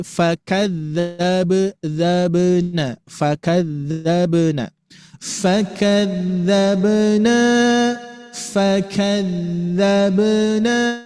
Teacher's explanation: Ya harus rokhwah Pak Bu, karena huruf dzal ini rokhwah. Jadi ngalir.